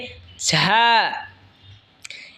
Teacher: ঝা জিহ্বার আগা সামনের নিচের দুই দাঁতের আগার দিকে লাগায় উচ্চারণ হবে ঝা।